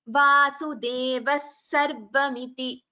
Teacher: Now coming to Visargaha, Visargaha, when it is followed by Sa, for example, in the verse Vasudevaha Sarvamiti, while chanting together, we chant it as Vasudeva Sarvamiti. So a Visarga followed by Sakara, you get an extra Sakara there. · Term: Visarga Sakara Sandhi